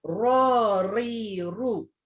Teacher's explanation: Huruf ra dia di hujung lidah dengan langit-langit juga, cuma dia ada sifat takrir ataupun bergetar. Jadi dia tak adalah terus melekat dekat langit-langit atas ya.